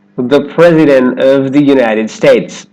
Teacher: Again, that T is held after the N in the NT cluster. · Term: held T